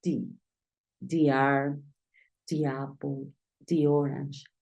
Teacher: tienes que pronunciar di cuando la siguiente palabra Inicia con una vocal